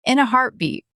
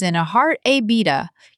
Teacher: It sounds almost like in the heartbeat. The T at the end of heartbeat is often a soft stop. Don't over pronounce it as in a heart a beta.